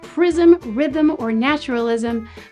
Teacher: in words like prism, rhythm, or naturalism, the syllabic consonant M creates syllables